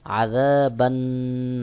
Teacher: এক আলিফ টান দিয়ে উচ্চারণ করতে হবে বা নুন জবর বান বা সরাসরি নুন কে যুক্ত করবে অর্থাৎ আলিফ এবং লাম বাতিল হয়ে যাবে নুনের উপর তাশদিদ রয়েছে বা নুন কে যেয়ে যুক্ত করবে নুনের · নুনের উপর তাশদিদ রয়েছে এ কারণে এখানেও ওয়াজিব গুন্নাহ করতে হবে